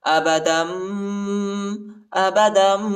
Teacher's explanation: یعنی آخر میں نون کی آواز نہیں نکالیں گے بلکہ میم کی آواز نکالیں گے، ٹھیک ہے، اور اخفا بھی کریں گے۔ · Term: اقلاب